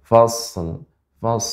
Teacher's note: karena Shad bukan huruf Qalqalah sehingga tidak langsung kita pantulkan jadi shadnya Ee Kita panjangkan sifatnya ya kita berikan mengalir fash